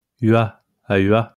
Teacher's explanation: Voiced labial, palatal approximant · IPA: ɥ